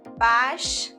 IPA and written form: bæʃ (bash)